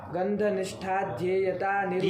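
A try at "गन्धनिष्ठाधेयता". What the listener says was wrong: ध्येयता नहीं बोल रहा है, क्या बोल रहा है? निष्ठ और आगे आधेयता है। अगर जो दीर्घ लगाना है।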